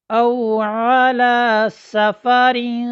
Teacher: नून साकिन हो या नून तनवीन हो, उसके बाद हुरूफ़ इख्फ़ा, ये 15 हरूफ हैं, उनमें से अगर कोई हर्फ आ जाए तो नून साकिन और नून तनवीन को उसके मखरज से पहले अदा करेंगे और आवाज़ नाक में जाएगी